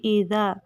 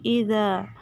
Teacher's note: ایذا نہیں پڑھنا، زا سے نہیں بدل دینا بلکہ ایذا. زبان کی نوک رأس لسان ثنایا علیہ کے کناروں سے لگے گی